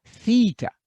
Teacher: An unvoiced TH at the beginning.